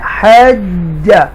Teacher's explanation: یہ کلکلا تو ہو رہا ہے لیکن ذرا ایکسٹرا سٹریس کے ساتھ ہو رہا ہے کیونکہ تشدید سائن ہے. یہ جیم مشدہ زبر کے ساتھ ہے, تو لہذا یہ بھی حج کلکلا کے ساتھ پڑھیں گے.